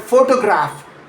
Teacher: In photograph, that middle O is a full clear vowel.